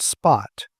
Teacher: But when you put an S in front of that to get the word spot, that puff of air all but disappears.